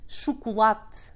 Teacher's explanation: interesting how in both languages you barely hear the e at the end